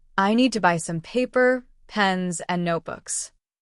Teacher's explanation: When you say it, the voice rises on paper and pens and then falls on notebooks. · That falling tone on the last word of a list shows the list is finished. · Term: melody